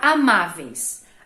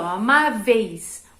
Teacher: A vogal é pronunciada mais fortemente, já a semivogal é mais fraquinha. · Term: ditongo